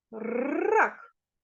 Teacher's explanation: перший звук р - це твердий приголосний звук позначаємо однією рискою ра